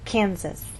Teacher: we stress the middle part of the word, Topeka, and here the first part, Kansas. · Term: word stress